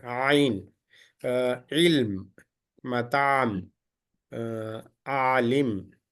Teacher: Ain is coming from the middle of the throat. It is a light letter.